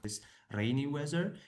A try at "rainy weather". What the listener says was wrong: Yeah, but rainy weather. So I think the candidate's pronunciation is really nice, but there are certainly some issues with that r sound with rainy weather. Rain, it's really quite noticeable, isn't it?